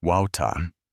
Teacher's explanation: The T sound is much clearer, and the R at the end is very soft